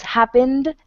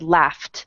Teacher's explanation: happened has an N at the end which is voiced so it ends with a hard D at the end however laughed has a GH which sounds like an f and that is unvoiced so it ends with a T